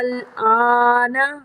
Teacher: یہ جو الف ہے یعنی حمزہ ہے، اس کو لمبا کریں گے